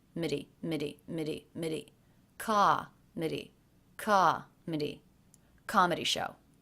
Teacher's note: the most stressed comet comet comedy it's the first syllable so the last two syllables are lower in pitch and flatter also may be a little quieter than the stressed syllable